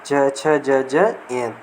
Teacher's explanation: तालु से उच्चारित होने वाले वर्ण है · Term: च वर्ग